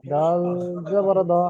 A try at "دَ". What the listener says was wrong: দেখেন দালের তিন আলিফ পরিমাণ টান আছে, দালের ওখানে লেখা ছিল তিন, এরকম বাংলাতে লেখা ছিল, সুতরাং দাল জাবার দা, জাবারটা আপনি তাড়াতাড়ি পড়েন।